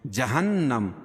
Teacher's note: نون مشدد اس میں غنہ ہوگا